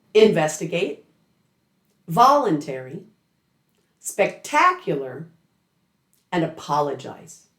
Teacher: Now, a lesser common stress pattern is on what I call type two suffixes, which I've also nicknamed AI suffixes. These place the stress two syllables before the suffix ending. Three of the most common of these suffixes all begin with the letter a.